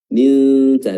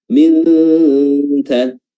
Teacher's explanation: Hukumnya adalah ikhfa ya, dan cara mengikhfakan atau menyamarkan nun di sini adalah dengan meletakkan lidah pada makhraj huruf ta. Min ta, dan makhraj huruf ta adalah ujung lidah bertemu dengan ujung gigi seri atau bertemu dengan bukan ujung gigi tapi pangkal ya, ujung lidah bertemu dengan pangkal gigi seri atas.